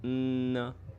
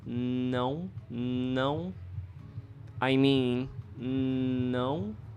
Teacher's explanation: With your mouth closed, you should make the N sound. And feel the vibration through your nose. Then open your mouth to say the sound. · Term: nasal sound